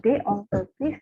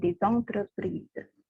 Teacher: Vokal E pada kata yang kedua. Makanya S-nya nyambung ke E. Ya, memberi liaison, bunyinya Z. Karena S diapit dengan vokal, itu bunyinya Z.